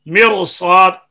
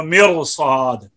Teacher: مرصاد، کیونکہ صاد کی تفخیم لازمی ہے، تو صاد کو پر کرتے کرتے کرنا ضروری ہے، اور را کو باریک کرتے کرتے اگر صاد بھی باریک ہو گیا تو صاد سین سے بدل جائے گا، تو حرف سے بدلے گا تو لہن جلی پیدا ہو جائے گی.